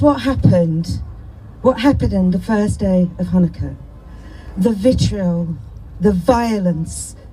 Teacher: she's got that breathy tone in her voice.